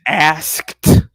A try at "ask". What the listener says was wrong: see, why would you put a T on the end of that word? You still putting a T on it.